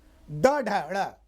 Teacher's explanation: मूर्धा माने उलटना, जब जीभ को आप पीछे मोड़ते हैं